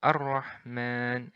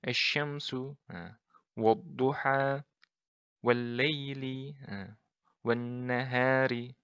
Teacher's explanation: Jadi bukan Al-Rahman tapi langsung melebur ke huruf ra. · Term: lam ta'rif syamsiyah